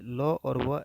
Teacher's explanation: ल और व अंतस्थ व्यंजन ठीक है और इनका उच्चारण जो होगा वो दंत से होगा